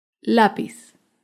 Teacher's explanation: lápiz es una palabra grave porque se acentúa en la penúltima sílaba